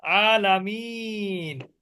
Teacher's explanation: আরজি সাকিন হলে সেখানে তিন আলিফ মাদ হবে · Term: মাদ্দে আরজি